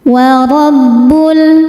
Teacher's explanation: Ro dibaca tafkhim karena berharakat fathah maka dibacanya tebal · Ro dibaca tafkhim karena berharokat fathah, maka dibacanya tebal. Wa rabbul. Lalu ada alif lam qamariyah karena alif lam menghadapi huruf qamariyah yaitu mim, maka lam dibaca jelas.